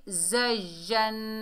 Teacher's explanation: नून जो है मुशद्दद है, तो नून में क्या होगा, गुन्ना होगा। कैसे पढ़ेंगे, ज़य्यन।